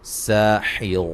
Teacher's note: باریک سیٹی سے سین کو ادا کریں گے